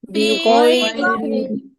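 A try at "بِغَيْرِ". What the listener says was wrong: ই টান হবে না, বিগাইরি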